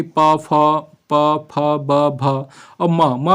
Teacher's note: प वर्ग है वह होठों को स्पर्श करते हुए निकलता है